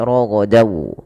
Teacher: Kalau huruf setelahnya wau, maka masukkan tanwinnya ke wau dan ditahan dan dibunyikan dengan huruf wau. Suara nunnya hilang. Raghodan menjadi roghadau. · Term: idgham bighunah